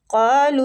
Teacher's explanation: قاف مستعلیہ پور پڑھیں گے، کھینچیں گے الف مد کی وجہ سے